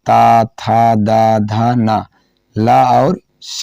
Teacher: ता, था, दा, धा, ना, ला और शा का उच्चारण स्थान क्या हो जाता है? दंत हो जाता है।